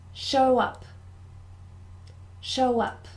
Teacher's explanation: show up show up so the thing to remember here is it is two words but we join them together so we almost move the W across to before up